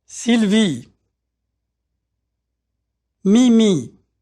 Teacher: Notice how tight the sound E is. There's no diphthong, which is to say that the vowel sound doesn't change.